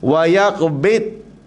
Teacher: Ramai berkalangan kita bila sebut dad ni, dia bunyi cenderung pada dal, ataupun dia melantun.